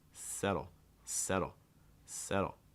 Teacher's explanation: I don't actually need to make contact for the D okay I can just do kind of like a very fast D sound just raising and lowering the tongue super fast